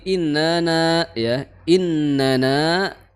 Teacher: Yang pertama na itu tidak memiliki mad, kemudian na yang kedua baru memiliki mad ya, karena di sana ada alif ya, dua harokat.